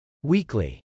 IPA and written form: wˈikli (weekly)